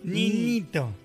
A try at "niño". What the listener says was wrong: Sos nasal en algunos momentos. ¿No te sale niñito?